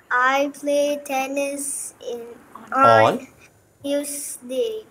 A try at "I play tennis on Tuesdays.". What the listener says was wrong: Pronounce the S. Tuesdays.